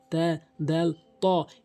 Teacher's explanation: জিহ্বার আগা সামনে দুটি দাঁতের গোড়া থেকে ওই তিনটি হরফ উচ্চারণ হয়